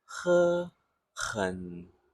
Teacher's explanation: So in the 喝 and 很, you can feel a soft, continuous breath at the back of your mouth.